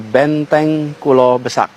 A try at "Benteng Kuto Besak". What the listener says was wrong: Bukan Benteng Kulo Besak Pak, tapi Benteng Kuto Besak. Bukan Kulo Pak, tapi Kuto ya Pak. Itu Kuto.